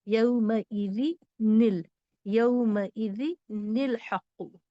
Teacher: اگر تنوین ہے تو یہاں نون ساکن ہے، اور نون ساکن ہے تو اس کو زیر دے کر پڑھنا ہوگا